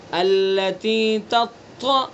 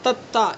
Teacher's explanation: طا کے اندر کئی ساری صفتیں ہیں جو اس کو موٹا بناتی ہیں. طا کے اندر صفت استعلا بھی ہے، اور طا کے اندر جہر بھی ہے، اور طا کے اندر شدت بھی ہے، اور طا کے اندر صفت اطباق بھی ہے. تو یہ بہت زیادہ موٹا ہوگا، پر ہوگا.